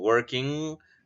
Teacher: And finally, velar nasal, which is the back part of the tongue touching the soft palate and blowing the air through our nose. And this is the sound for ing or for nk ending, the words endings in ing or nks.